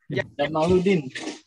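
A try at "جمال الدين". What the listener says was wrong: Jamaluddin itu mimnya panjangin. Jamaluddin ya. Jangan dipendekin. Nah, itu mimnya ada madnya, ada alifnya. Ya, Jamal bil alif ya.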